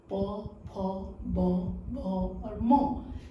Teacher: दोनों होठ जो है एक दूसरे से स्पर्श कर रहा है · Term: पवर्ग